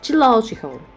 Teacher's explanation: the first syllable it still gets a little bit stressed but not that much if we compare to the third one right so that that's where the second syllable the secondary stress · we have a primary strength at the third syllable which means the third syllable it receives the strongest stress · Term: primary stress